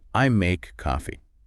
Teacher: So, we don't stress the pronoun I, and we don't heavily stress the verb make. We pour our physical energy into the noun.